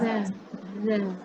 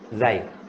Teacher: Kalau huruf Zal, ujung lidah di ujung gigi atas. Zal. Huruf Zai, ujung lidah belakang gigi bawah. Dan gigi kita merapat.